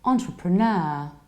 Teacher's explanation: And you stress the last syllable